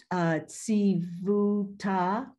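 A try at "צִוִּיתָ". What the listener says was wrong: It's the same, it's E again. It's just like the Ratzita. This is Tsivita.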